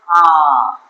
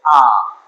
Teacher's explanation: আর নিম্ন অবস্থিত উচ্চারণ যেমন আ, জিভটা নিচে দিকে নেমে যায়, আ জিভটা নিচে দিকে নামছে।